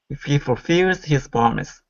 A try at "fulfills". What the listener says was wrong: Watch that I on fills instead of fulfills. Keep it as a short I. If he, if he fulfills his promise.